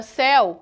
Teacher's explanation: O ditongo aberto acontece quando a vogal E ela adquire o som de E e quando a vogal O adquire o som de O, como é o caso do monossílabo céu. Percebam que a palavra céu, a pronúncia dela é imensamente aberta. O E ele possui o som de E.